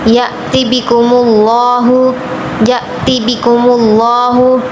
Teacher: لفظ اللہ پر تفخیم کریں گے